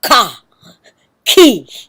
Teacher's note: the Tagalog syllables ka, ko, ku do not sound the same as the Spanish ka, ki, ko, ku because the Tagalog K is subtly aspirated